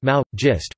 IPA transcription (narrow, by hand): mao̞ˈjist